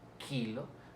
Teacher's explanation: No roza del todo la lengua con el velo del paladar. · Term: velares